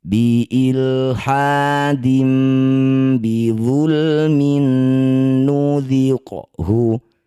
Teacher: Kasroh tanwin bertemu ba disebut bacaan iklab. Cara bacanya bunyi kasroh tanwin tukar dengan mim, bibir langsung rapat dengung 2 harokat.